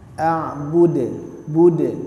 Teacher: huruf Dal merupakan huruf Qalqalah sehingga harus ada pantulan